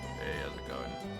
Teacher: I don't like how easy it is for me to just slip into deep bassy voice now. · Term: vocal fry